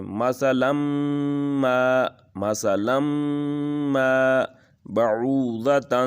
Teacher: جو نون کی آواز آ رہی ہے وہ ہم غنہ میں بدل دیں گے